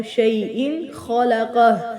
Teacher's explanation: اخفا نہیں ہوگا، اظہار ہوگا کیونکہ حروف حلقی میں سے خا ہے